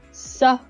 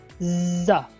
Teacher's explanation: S is the voiceless sound, while z is voiced sound.